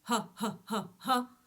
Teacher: Ha is using no tongue at all and is purely the belly.